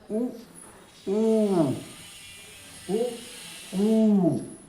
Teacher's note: यह उ हम जब बोलते हैं हमारा ओष्ठ सट जाता है।